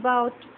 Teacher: So, O in boat, closing diphthong. Beginning at the central position, below half closed and moving in the direction of O. The lips are neutral in the beginning and rounded towards the end.